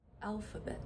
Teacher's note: Schwa is the second syllable, alphabet, and it's spelled with an A.